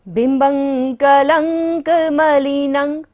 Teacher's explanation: ब के ऊपर बिंदी और बाद में क्या है, क वर्ग है, तो बिंदी का उच्चारण क्या होगा, अंग की तरह। बिम्बं कलंक मलिनं, न के ऊपर बिंदी है और दोबारा से क्या आ रहा है, क वर्ग।